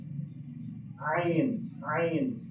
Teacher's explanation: Dari ain eta makhrajna di mana? Tikoro belah tengah tikoro. Ain. Ari tikoro eta bahasa Arabna halak. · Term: huruf halak